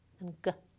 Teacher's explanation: if you bring the back of your tongue up against the back of the soft palate, the velum, you produce the velar sounds [k] and [g].